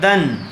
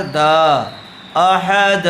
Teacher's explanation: دو زبر پر وقف کرنا ہو تو ایک زبر کے ساتھ الف پڑھا جاتا ہے۔